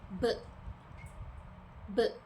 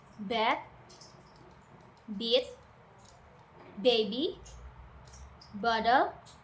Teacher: Your lips come together and release a burst of air.